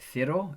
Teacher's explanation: They use the th sound for the Z.